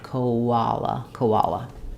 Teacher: And then for koala bears, koala it sounds like ko, and then we have the ah sound and a l at the end, and between the o and the ah we have vowel to vowel linking with a w sound